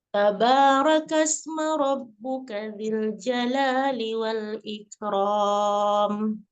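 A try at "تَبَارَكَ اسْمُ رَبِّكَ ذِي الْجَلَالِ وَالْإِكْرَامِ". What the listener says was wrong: Tabarakasmu, bukan ma.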